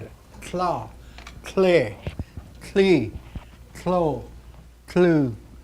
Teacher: a puff of air comes to the side